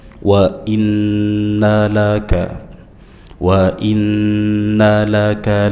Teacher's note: Ayat berikutnya wa i hamzah kasrah tegas wa i jangan dibaca mirip ya wai w wainna wa i wa in ya nun bertasydid dibaca dengan ghunah dengung ditahan